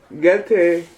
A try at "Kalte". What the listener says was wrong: Ka. Kalte. Gel means this vertebrae of the spine. This is Cal. Yeah, Kalte.